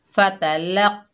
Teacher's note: फ़ाता, लाम के ऊपर ज़बर, आगे क़ौफ़ मुशद्दद है, लाम को क़ौफ़ से मिलाएंगे और क़ौफ़ हुरूफ़ मुस्ताला में से है, मोटा पढ़ेंगे। · क़ौफ़ हुरूफ़ मुस्ताला में से है, मोटा पढ़ेंगे। फ़तलक़, क़ौफ़ के ऊपर खड़ा ज़बर है, एक अलिफ की मिकदार खींच कर पढ़ना था, लेकिन ऊपर छोटी मद आ रही है।